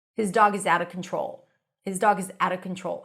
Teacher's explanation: sometimes, even if it's the beginning of the sentence, you will still drop the h.